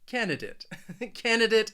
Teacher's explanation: some people may say it with a dut and others may say it with a dit